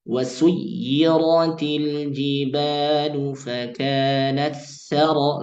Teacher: meleburkan sifat hams ta ke huruf sin pada lafaz fakanat saraba